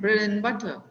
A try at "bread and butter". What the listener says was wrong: There is no, that D is not heard at all. When and comes in between, like Ravi and Binoy. Ravi and Binoy. It is Ravi and Binoy.